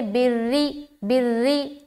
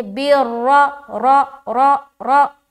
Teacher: رائے مشددہ کے اوپر زبر آ رہا ہے تو موٹا ادا کریں گے